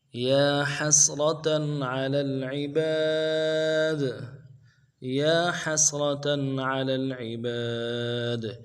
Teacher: یا کے اوپر کھڑا زبر ہے، ایک الف دار میں کھینچیں گے، ہا کو سین کے ساتھ ملانا ہے اور را کو موٹا کرنا